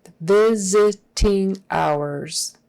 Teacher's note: That S turns into a Z. It's not visiting.